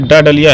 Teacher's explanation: मूर्धन्य भी है और अल्प प्राण भी है